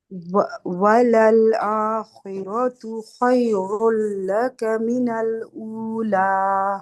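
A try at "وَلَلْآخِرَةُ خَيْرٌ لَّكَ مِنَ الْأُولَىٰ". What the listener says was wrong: थोड़ी सी स्पीड आहिस्ता कर ले, ठीक है।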